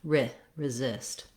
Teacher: So even though the words resist and resistance start with the letters RE, we don't actually say resist and resistance. We don't do the tense E sound, but rather a lax I sound, resist. I wrote it here with the letters UH like resist, thinking of it as a schwa sound, because for most people, if you think of it as an I or an I sound, you may still be tempted to be doing that tense E sound.